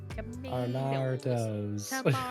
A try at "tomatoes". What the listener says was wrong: Really, you chucked an extra. You chucked an extra hard R in that tomato.